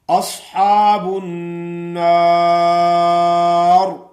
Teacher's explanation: یہ را موٹی ہوگی، کیوں کہ یہ را وقف کی حالت میں ساکن ہو گئی ہے اور اس سے پہلے زبر ہے۔ را ساکن ہو اس سے پہلے زبر ہو، را ساکن ہو اس سے پہلے پیش ہو تو وہ را موٹی پڑی جاتی ہے۔